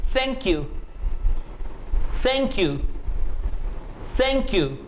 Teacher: TH की एक आवाज है वॉइसलेस, एंड एस्पिरेटेड, इसको आप th एस्पिरेटेड भी कह सकते हैं और th वॉइसलेस भी कह सकते हैं।